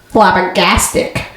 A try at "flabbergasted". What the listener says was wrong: You end with a C. No, you're supposed to end with a D.